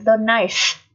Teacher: Th ở đây được phát âm là lưỡi giữa răng nhé. Với số thứ tự thì bao giờ th cũng được phát âm là lưỡi giữa răng.